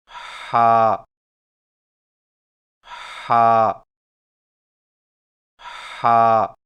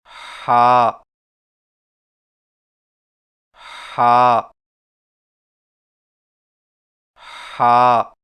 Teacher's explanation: ہا کی ادائیگی میں زبان کی جڑ کو حلق کی طرف مضبوطی سے دباتے ہوئے باریک اور رگڑ کھاتی سانس میں پڑھیں